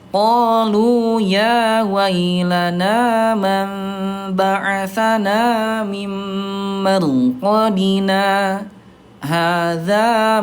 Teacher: berhenti sejenak ya tanpa mengambil nafas itu namanya saktah